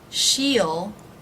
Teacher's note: the E vowel might relax a little bit into the I as in sit vowel. He will, he'll be here soon.